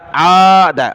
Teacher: عین کو کھینچنا اوپر، دال کو نہیں